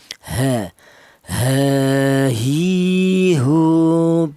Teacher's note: Huruf h ini keluarnya huruf berasal dari pangkal tenggorokan ya. Pangkal tenggorokan ditempati dua huruf, yaitu huruf h ini dan huruf hamzah ya.